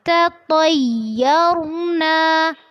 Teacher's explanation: دھیان رکھنا ہے کہ یا میں شدت نہیں ہوگی، اس کو نرمی سے ہی پڑھنا ہے